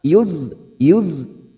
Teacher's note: tepi lidah kita atau pinggir lidah kita nempel pada gigi geraham atas, boleh kiri boleh kanan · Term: huruf dhad